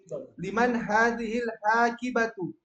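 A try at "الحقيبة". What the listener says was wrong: Haqi. Haknya pendek. Yang panjang ki-nya. haqibatu. Haqibatu.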